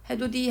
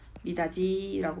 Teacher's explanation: 이모음 앞에서 디귿은 지읒으로 바뀌는 거예요. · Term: 구개음화